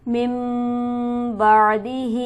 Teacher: من بعدہ، میم پر ہم غنہ کریں گے، مطلب نون ساکن پر ہم غنہ کریں گے کیونکہ اس کے بعد حرف ہلکی موجود نہیں ہے. اور ہاں پر ہم کھڑی حرکت کی وجہ سے اسے 1 الف کے برابر کھینچ کر پڑھیں گے.